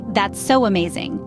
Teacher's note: This added W sound is our uninvited guest, making the transition from so to amazing smoother. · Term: intrusion